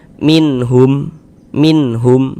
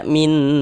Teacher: Jadi bunyi nun sukun atau bunyi tanwinnya itu dibaca jelas kemudian tidak didengungkan. Nah, maka karena dia tidak didengungkan, tidak digunahkan, maka dibaca pendek saja. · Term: izhar halqi